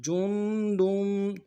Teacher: جیم کو نون ساکن کے ساتھ ملانا ہے، غنہ کریں گے، اور دال کی تنوین کو آگے میم کے ساتھ ملانا ہے